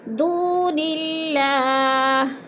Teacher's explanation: دون اللہ، دو پہ وہ مدہ ہے، وہ ساکن سے پہلے دال کے اوپر پیش ہے تو وہ مدہ اللہ پر باریک پڑھا جائے گا، کیونکہ اللہ سے پہلے لفظ نون کے نیچے زیر آ گیا ہے تو ادھر اللہ کو باریک کر کے پڑھیں گے